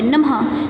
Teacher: देखो आधे ह की आवाज़ आ रही है ना बच्चों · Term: विसर्ग